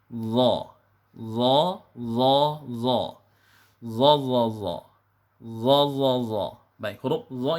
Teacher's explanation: karena dia huruf isti'la maka bunyinya harus kita tebalkan dengan cara mengarahkan bunyinya ke bunyi o kemudian mengangkat pangkal lidah